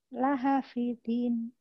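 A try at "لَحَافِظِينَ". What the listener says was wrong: Haknya panjang.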